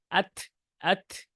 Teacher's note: আমরা যখন তা হরফে সাকিন দিব সেই তা হরফটা তখন থ হ থ এর দিকে চলে যাবে